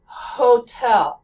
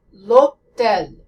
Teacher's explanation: French speakers skip the American H sound altogether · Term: no H sound